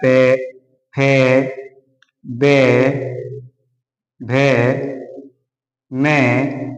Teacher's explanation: ओष्ठ, यानी होठ के द्वारा, दंत यानी दांतों के द्वारा। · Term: पे वर्ग